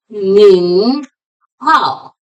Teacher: Hao is in third tone.